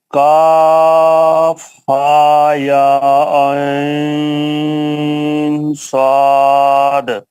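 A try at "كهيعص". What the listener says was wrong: Last میں آئین میں اگر آپ پڑھ رہے آئین ہو گیا اظہار, آئین کا نون مطلب اخفا کرنا ہے صاد کے ساتھ, چھپانا ہے صاد, تو آئین اظہار نہیں ہوگا. عین صاد. عین صاد.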